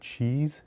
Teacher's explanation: Ch is a voiceless palatal stop. It's the ch sound in the word cheese.